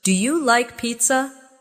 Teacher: Make sure your voice rises at the end.